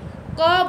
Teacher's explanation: क और ख जो है ये हमारे अघोष स्वर, अघोष हैं, ये अघोष वर्ण हैं